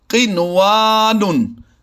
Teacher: نون ساکن کے بعد واو اسی کلمے میں ہے تو ہم نے یہاں پر بھی اظہار مطلق کرتے ہوئے پڑھنا ہے، غنہ نہیں کرنا